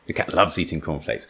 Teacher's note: cornflakes is not new in this sentence apparently we've been talking about cornflakes so loves and eating is stressed here both verbs